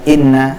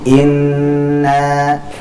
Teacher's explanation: Inna itu kita baca dengan gunah yang dipanjangkan karena Nun tasydid Jadi bukan Inna langsung tapi Inna kemudian na kita baca panjang